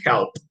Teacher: the verb help, that finishes in the letter P, that is a voiceless sound, is going to be a T